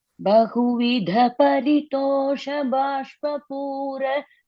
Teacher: In the first line, Bahuvidha Paritosha Bashpa Pura. The Ba, I heard it as a Mahaprana. It is an Alpa Prana.